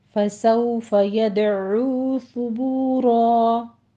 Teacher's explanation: यदउ में दाल के ऊपर कलकला करेंगे